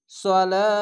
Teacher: যদি থামেন তাহলে হা হয়ে যাবে, 3 আলিফ টেনে পড়বেন। যদি মিলিয়ে পড়েন তাহলে 1 আলিফ টেনে পড়ে তা যে তি, এরকম সালাতি মিন এভাবে চলে যাবে। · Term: মাদ্দা আরজি